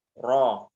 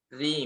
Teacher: Cuman memang ini ketebalan dan ketipisan saja yang berbeda itu. Jadi kalau ro roh berarti tebal. Kalau ri misalnya tipis